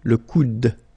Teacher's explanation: Okay, remember you don't insist on this final E, it only gives you the sound of d at the end